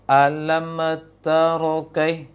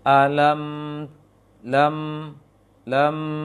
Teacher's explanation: mim itu dijalankan sedikit suaranya, dialirkan sedikit suaranya, kemudian baru dibaca huruf setelahnya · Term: sifat tawasut